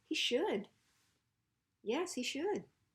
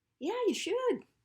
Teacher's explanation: the emphasis is on should